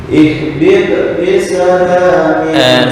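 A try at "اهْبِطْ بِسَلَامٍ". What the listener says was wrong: Sebentar, untuk qalqalah itu usahakan kayak membaca harokat fathah ya. Ihbita bisana ihbita, bukan ihbit, enggak. Ihbita bisana.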